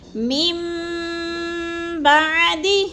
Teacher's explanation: میم بعد، میم پہ جو ہے اقلاب ہے، میم کو با کے ساتھ ملا کے پڑھیں گے، درمیان والا نون ساکن نہیں پڑھا جائے گا